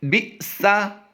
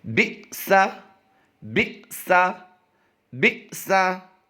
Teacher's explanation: یعنی ہم نے جھٹکا دیا ہے، حمزہ ساکنہ ہے، یہ آپ دیکھ رہے ہیں حمزہ کے اوپر جزم آ گئی تو اسے کیا کہتے ہیں، حمزہ ساکنہ، تو اسے جھٹکا دے کر پڑھتے ہیں